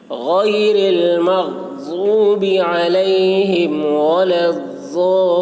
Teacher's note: غیر میں غین کو حلق سے ادا کرنا ہے